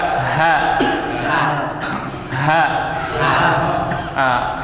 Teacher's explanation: ha makhrajnya dipangkal. Ini pangkal tenggorokan. Coba ha. Hati-hati tertukar dengan ha kecil.